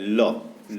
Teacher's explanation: य और व जो है, जो य अब व होता है वह अर्धस्वर होता है, अर्धस्वर होता है। ल पार्श्विक व्यंजन होता है जिसके उच्चारण में हवा जीभ के पार्श्व अर्थात बगल से निकल जाए। जीभ के बगल से हवा जब निकल जाती है जिस व्यंजन के उच्चारण में, वह पार्श्विक व्यंजन कहलाता है, तो वह ल होता है।